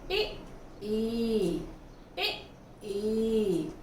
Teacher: तालव्य, तालू से बोला जा रहा है